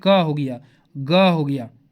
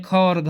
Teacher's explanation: जिसमें ज्यादा वायु निकलता है वो महाप्राण हो गया